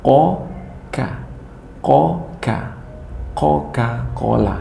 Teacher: pangkal lidah dengan langit-langit yang lurus di atasnya agak keluar sedikit dari makhraj qaf, yaitu tempat huruf kaf